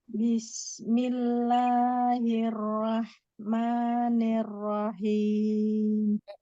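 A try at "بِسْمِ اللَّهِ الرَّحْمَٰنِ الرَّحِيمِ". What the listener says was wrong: Hati-hati nih rohmannya diluruskan lagi kasrohnya. Iya, pada ro tidak rahman ya, tapi jadi dia bismillahirrahmanirrahim.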